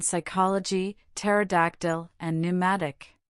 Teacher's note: In words derived from Greek, the initial P in the diagraph PS is silent as in psychology. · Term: silent P